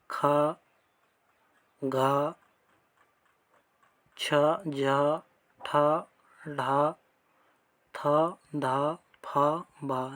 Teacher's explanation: ऐसे वर्ण जिनके उच्चारण में अधिक वायु लगती है उन्हें महाप्राण कहा जाता है। तो सभी वर्गों के द्वितीय, चतुर्थ, वर्ण को महाप्राण कहा जाता है।